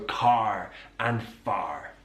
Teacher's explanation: Now, in most British English accents, it's non-rhotic, so we don't use that R, but in the West Country, that R is pronounced, so car and far. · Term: rhotic R